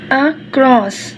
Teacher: The accent in the word across is on the second syllable.